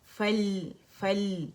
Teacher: فل حمزۃ الوصل drop ہو جائے گا روانی میں